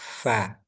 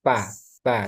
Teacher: ujung gigi seri atas menyentuh bibir bawah bagian dalam fa bukan pa gitu ya.